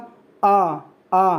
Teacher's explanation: ही मैं बड़ा बोलूंगा तो बड़ा आ को बोलूंगा आ मतलब ये विवृत स्वर है थोड़ा ज्यादा हवा निकलेगी थोड़ा ज्यादा मुंह फैले